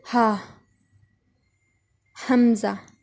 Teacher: حمزہ اور ہا، یہ دو الفاظ حلق کے آخر سے جو سینے کی طرف ہے، مطلب ایک تو منہ کی طرف ہوتا ہے نا، وہاں سے نہیں ان کی آواز نکلے گی، ان کی سینے کی طرف سے نکلے گی، ہا، حمزہ۔